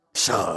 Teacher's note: She said it's the third tone, not the fourth tone.